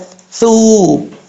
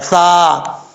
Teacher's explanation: ثا بغیر سیٹی کے پڑھا جاتا ہے، ثو، زبان کا سرا اوپر والے دانتوں کے اندرونی کنارے سے لگے تو ثا پڑھا جاتا ہے